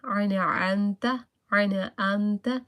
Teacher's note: You don't need to like hide your voice on the noon because there is afternoon there is the following letter ein, that is the haruf halki, short letter, that's not included in the gunna.